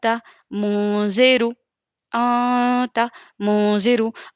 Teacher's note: नून के आवाज़ को हम इक्फ़ा की जो मिक़दार है उसको एक अलिफ के बराबर छुपाकर नाक में पढ़ेंगे